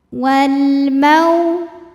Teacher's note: Karena alif lam menghadapi huruf qamariah yaitu mim, maka lam sukun dibunyikan dengan jelas atau disebut dengan izhar qamari